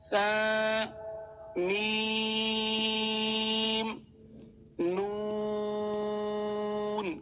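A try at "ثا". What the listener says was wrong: اچھا، اس میں سا جو ہے زبان کو آپ ہلکا سا باہر کریں گے تو ادا کریں گے تو یہ آسانی سے ادا ہو جائے گا۔ اس والے سا کو سین جو ہے سا نہیں پڑھنا، کیونکہ سا پڑھیں گے وہ سین کی آواز میں تو سیٹی آ جاتی ہے، تو اس کو آپ نے سافٹ پڑھنا ہے،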